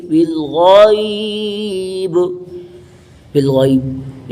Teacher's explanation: یہ حروف لین ہے، جلدی سے ادا کریں گے، غین کو پر پڑھیں گے